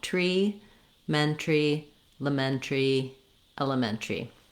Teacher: And then in this pronunciation, the ARY gets reduced to just, we drop the AR and we go right from the T to the R sound. And it sounds just like the word tree. So you can start from the tree and work your way backwards as well.